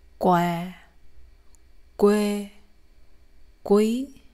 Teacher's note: since there is a W sound, the lips are always rounded and sticking out while pronouncing words that have the sound in it